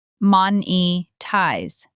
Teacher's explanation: In Spanish, the word is monetizar with a Z sound, but in English it's monetize with a soft Z and the stress on the first syllable